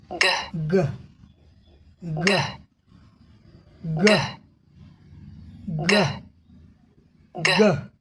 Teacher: Back of tongue top of mouth, जिह्वा का पिछला भाग देख रहे हैं, यह क्या करती है, ऊपर स्पर्श कर लेती है जिससे हवा रुक जाती है। दूसरे चरण में आ गए, move back of tongue away from top of mouth, और मुख के उस ऊपर भाग से हम अपने जीभ को नीचे की तरफ ले आते हैं।